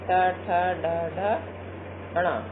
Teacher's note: आप देखिए हमारी जीभ जो है ऊपर के भाग को स्पर्श करी, ऊपर का भाग जो होता है मुख का वो मूर्धा कहलाता है, इसलिए इसे मूर्धव्य वर्ण कहते हैं।